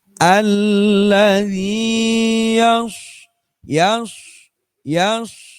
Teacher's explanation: kalau shad itu sifat hurufnya shafir. Shafir. Ada kayak suara siul